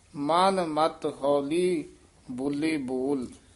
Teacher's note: ਬੋਲੇ ਜਿਹੜਾ ਪਦ ਹੈ ਥੋੜਾ ਜਿਹਾ ਖਿੱਚ ਕੇ ਉਚਾਰਨ ਕਰਨਾ ਹੈ।